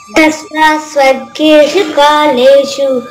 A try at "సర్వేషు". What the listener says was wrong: అది సర్గేషు కాదమ్మా, సర్వేషు.